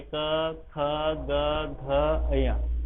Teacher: कंठस्थ व्यंजन होते हैं का ख ग घ, सबको बोल के देखो, आप बोलोगे तो बोल के ही आपको पता चलेगा कि सबकी साउंड गले से आती है